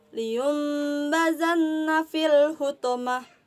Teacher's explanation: tanwin bertemu dengan huruf ba contohnya saja Lion bazan nafil huthamah yang dibacanya dengan cara mendengung membentuk huruf mim · dibacanya dengan cara mendengung membentuk huruf mim. Karena ada nun di situ karena ada nun mati bertemu dengan huruf ba. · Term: iqlab, iklab